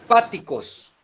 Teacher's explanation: Se carga la voz en la antepenúltima sílaba. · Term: Esdrújula